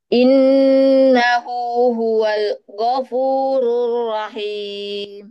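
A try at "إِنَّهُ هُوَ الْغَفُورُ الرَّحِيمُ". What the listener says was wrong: Nah, sudah tidak ada pantulan tapi ada saktahnya tadi. Huwal ghafur. Tapi mengalir saja, Bu. Innahu huwal ghafurur rahim.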